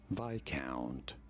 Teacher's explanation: You do want to stress on the first syllable. Viscount. On the I syllable.